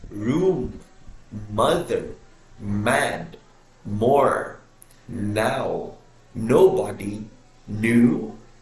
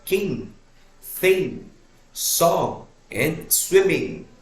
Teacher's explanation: created when you completely block air flow through your mouth and let the air pass through your nose